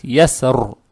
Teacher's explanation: Раз уж мы остановились, здесь появляется сукун, и здесь фатха, то мы, вне зависимости от того, здесь глагол или существительное, ро надо читать твердо. Поэтому мы будем придерживаться мнения большинства и будем ро читать твердо, то есть ясру.